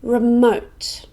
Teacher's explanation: it has two syllables and we stress the second one